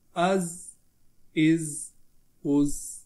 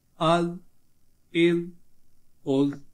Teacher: जा को सीटी के साथ पढ़ते हैं हम, और जाल को बगैर सीटी के।